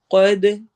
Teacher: قاف کو ہیوی کرنا ہے، حروف مستعلیہ میں سے ہے اور دال پہ قلقلہ کرنا ہے